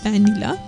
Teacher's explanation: notice how I pronounced vanilla right I bit my lower lip